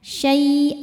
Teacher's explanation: Cara bacanya panjang dua harakat tanpa ada bunyi n lagi. · Nah, ketika berhenti di sini hukumnya mad iwad karena ada baris tanwin fathah yang diwakafkan. Cara bacanya panjang 2 harokat tanpa ada bunyi n lagi.